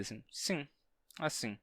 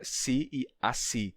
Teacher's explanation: ou assim relaxaram e surgiam uma nasalidade assim sim assim e essa pronúncia sim assim com nasalidade terminou se tornando a pronúncia mais comum